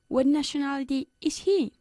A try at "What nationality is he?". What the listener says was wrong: No. What nationality is he? No. What nationality is he? Bajando la voz al final.